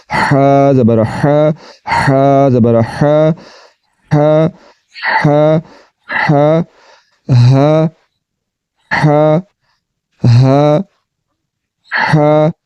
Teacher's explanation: اب اس کو پڑھتے ہیں حلق کے درمیان والے حصے سے آواز کو نکالتے ہوئے